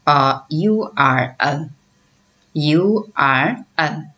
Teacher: U physically vowel sound, but when it is pronounced, ya consonant sound is sent in the beginning. So U U sound is pronounced as ya, you.